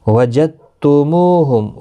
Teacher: دال ساکن نہیں پڑھا جائے گا کیونکہ آگے مشدد حرف ہے، تو وجدتم وجدتموہم سختی کے ساتھ پڑھیں تاکہ تشدید ظاہر ہو.